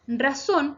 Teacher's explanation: Razón se acentúa en la última sílaba, por lo tanto es aguda.